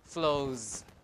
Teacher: So it's a voice sound. So when you put in an S, you have to make it voiced as well because of the assimilation process. So we have a Z.